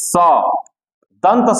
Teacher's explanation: दंत स इसीलिए कहा जाता है कि इसका दांत से उच्चारण होता है